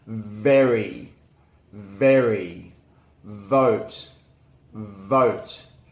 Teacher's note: go on to the inside of our bottom lip v and you'll notice the sound is voiced we can feel our voice box vibrate when we say the sound